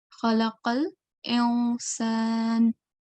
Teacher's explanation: instead of the sound being clear, like the sound of letter N, it has to be concealed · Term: ikhfa